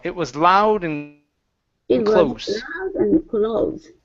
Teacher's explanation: give me a little bit more oo at the end of that vowel